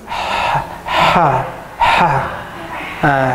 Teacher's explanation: pastikan secara sebutan dia bunyi angin dulu keluar baru keluar suara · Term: ha pedas